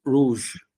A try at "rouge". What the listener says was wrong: রুজ না এটা হুজ, হুজ